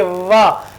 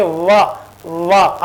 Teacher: नीचे वाले होठ ऊपर वाले दांतों से टच करेंगे